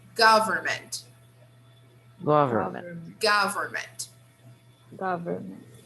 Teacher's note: the stress is on the first syllable here